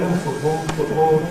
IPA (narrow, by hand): ˈfʊʔbɔːɫ